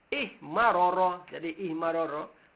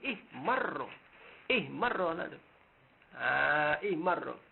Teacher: pasti dia kena idgham. Idgham ra dalam ra yang kedua jadi ihmarra